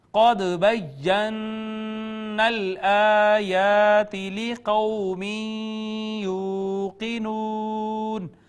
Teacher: دال ساکن پہ قلقلہ، نون مشدد پہ غنہ